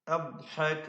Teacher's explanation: ഹാ വ്യക്തമാക്കി ശരിക്ക് അതിന്റെ മഖ്റജിൽ നിന്ന് തന്നെ, തൊണ്ടയുടെ മധ്യത്തിൽ നിന്ന് തന്നെ ഹാ ഉച്ചരിക്കുക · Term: ഹൽഖിയായ അക്ഷരമാണ്